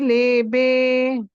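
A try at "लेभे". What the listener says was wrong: Lebhe, Mahaprana, tadidam alpa prana.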